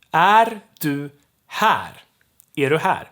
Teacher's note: And that's is or are in Swedish. And then we have du, which gets reduced to ru. It's unstressed.